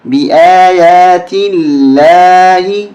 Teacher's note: یہ درمیانی لام باریک ہوگی اس لیے کہ پہلے زیر ہے